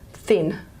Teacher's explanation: the tongue tip or tongue blade the first centimeter or two of the tongue gets protruded between the lips